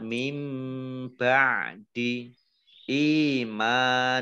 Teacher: Dibaca mendengung, ditahan 2 harokat. Nun sukun bertemu dengan huruf ba, bacaan iklab. Membalik ya. Ba-nya dibaca mim dulu.